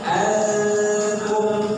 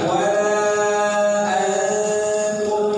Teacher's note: jumpa dengan Ta Maka nunnya disamarkan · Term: ikhfa